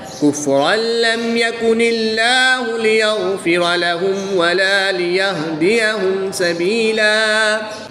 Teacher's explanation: یہاں پر بھی غنہ نہیں کریں گے بلکہ میم ساکن کو خوب ظاہر کر کے پڑھیں گے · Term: اظہار شفوی